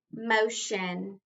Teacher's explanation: the accent is not on the second syllable but the first